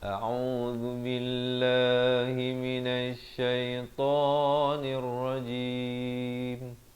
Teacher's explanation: A dengan au. Hamzah dengan ain. Zal di hujung lidah.